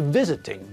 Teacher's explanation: The same thing is true of verbs like visit and remember. Visit has got two syllables, but again, the stress is on the first part of the word, not the last part.